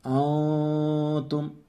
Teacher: غنہ کریں گے، ناک سے پڑھیں گے اور نون کی آواز ناک میں چھپائیں گے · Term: اخفا